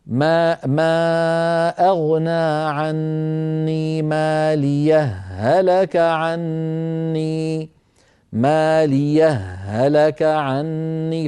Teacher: فيدغمون الهاء في الهاء